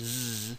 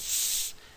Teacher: s and Z you'll notice that that your throat is is vibrating for the Z but not for the S right um the vibration is in your vocal folds and that's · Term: voicing